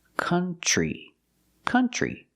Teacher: country we don't use the uh sound like foot and book we use the uh sound like cup and up and cut this is a relaxed sound uh C country country and we see the TR makes a